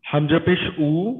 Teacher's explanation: উ বলার ক্ষেত্রে কিন্তু হামজা পেশ উ। কণ্ঠনালীর মাঝখানে চাপ লাগে না।